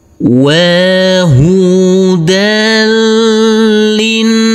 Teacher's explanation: Huruf nun ini adalah bacaan gunnah, harus kita tekan, kita tahan, serta kita dengungkan.